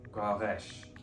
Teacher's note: Between slender vowels, r is pronounced r, and between broad vowels, it's a uvular, r, like in French. The r is surrounded by broad vowels, but the S is connected to a slender vowel, so it's not pronounced S, it's pronounced Sh.